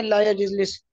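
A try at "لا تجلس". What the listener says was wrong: ये यजलिस नहीं, तजलिस है, ते है इस पर।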